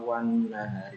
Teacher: wan an-nahari juga dibaca idgham, dibaca gunnah karena ada nun yang bertasdid. Cara membacanya adalah wan nahari dibaca 2 harokat atau 1 alif.